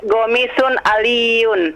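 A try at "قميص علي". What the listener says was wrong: Pakai qaf. Qamisun pakai qaf.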